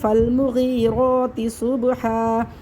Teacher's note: وقفی صورت میں دو زبر میں سے ایک زبر ختم ہو جائے گا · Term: وقف الابدال